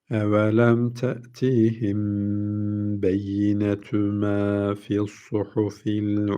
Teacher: Kendisinden sonra B harfi gelince dudak ihfası diyorduk. Hemen acele etmiyoruz. Bu gibi yerlerde tutuyoruz.